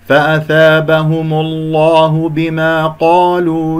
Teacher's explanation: فأثابهم، الهاء مضموم والميم مضمومة، نضم الشفتين، مضموم جاء قبل اسم الجلال، الله تفخم اللام